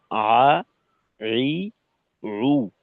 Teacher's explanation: যে আইন হলকের মধ্যখান থেকে আর হাও হলকের মধ্যখান থেকে। বাকি আইনটা হবে হলকের মধ্যখানের নিচের অংশে। আর হাটা হবে হলকের মধ্যখানের উপরের অংশে।